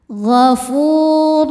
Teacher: Fu hukumnya mad thobi'i zohiri. Sebab ada wau sukun sebelumnya baris dommah. Cara bacanya panjang dua harakat.